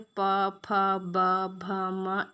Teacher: इन वर्णों का उच्चारण करते समय हमारे होठ जो होते हैं वो आपस में मिलते हैं, इसलिए इनका उच्चारण स्थान ओष्ठीय है।